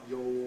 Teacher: Yo. No, the vowel is too close. Long O instead of short O.